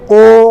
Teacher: इसके बाद कंठोष्ठ, कंठ और ओष्ठ दोनों से एक साथ निकले उन्हें कंठोष्ठ कहलाते हैं।